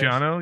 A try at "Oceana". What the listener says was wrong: No, Oceana with an A.